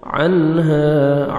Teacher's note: عین کو اپنے صحیح مخرج سے ادا کریں گے تاکہ حمزہ میں ساؤنڈ مکس نہ ہو